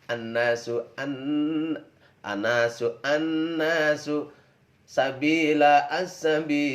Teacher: untuk huruf lam dibaca seperti tidak ada sebab sudah melebur huruf samsiah, atau dibaca dengan idgham. Cara membaca seperti ini tetaplah berlaku meskipun di atas huruf samsiah tersebut tidak terdapat tanda tasydidnya. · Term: alif lam samsiah